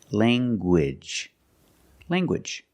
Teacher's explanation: You have the nasal ng sound, lang, and the hard g, gwidge. Language.